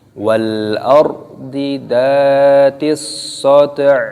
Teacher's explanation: Di sini alif lam syamsiyah, shadnya ditasdid, dimasukkan. Dan di sini ketika berhenti, ketika waqaf, maka ainnya dimatikan.